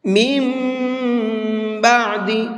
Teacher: اب یہاں پر بھی غنہ کریں گے، اور نون نہیں پڑھا جائے گا بلکہ اب یہ میم پڑھا جائے گا۔ پہلے والے میم کو اس چھوٹے والے میم کے ساتھ میں ملا کر کے پڑھیں گے غنے کے ساتھ میں۔